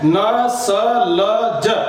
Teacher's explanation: वर्ष्य ध्वनि होती है दांतों के मूल से। दांतों के मूल का मतलब होता है दांतों के मूल भाग से।